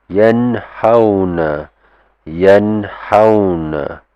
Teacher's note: it's quite hard to blend and merge the sound of nun into ha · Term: izhar halki